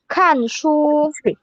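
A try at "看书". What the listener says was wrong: Panjangin dikit. Kan shu.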